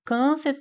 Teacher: Então, nós temos aqui já como gabarito o item A, pois câncer, a sílaba mais forte é a penúltima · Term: paroxítona